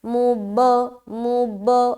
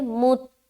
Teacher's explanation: اس میں ہم جدا نہیں کریں گے کیونکہ تا حروف قلقلہ میں سے نہیں ہے